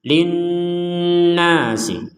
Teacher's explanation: Di sini ada nun bertasydid, maka kita dengungkan linnasi. Jadi kita memberikan jeda 2 harokat, ya, panjangnya sekitar 2 harokat untuk dengungannya.